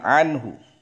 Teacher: Nunnya sukun ketemu ha, berarti bacaan idhar, jelas.